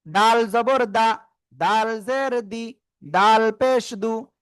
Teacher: জিহ্বার আগা উপরে দুই দাঁতের গোড়া লাগাবো, লাগিয়ে তিন আলিফ টেনে উচ্চারণ করব